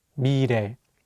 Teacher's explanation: the 리을 consonant is between the vowels E and 에, so it will have more of an R sound